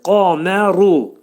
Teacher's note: Qafın məxrəci dilin sonu və dilçəyin əvvəlindədir.